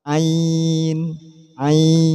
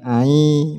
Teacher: Hukum panjangnya adalah 3 alif. Dia keluarnya tanpa dipaksa. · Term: mad layin